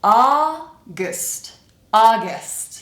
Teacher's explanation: Here we need to reduce the vowel to awah. So we're pronouncing basically just the consonants. It kind of sounds like the vowel disappears.